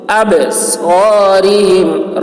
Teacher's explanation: با میں قلقلہ ہوگا، اب آواز ٹکرائے گی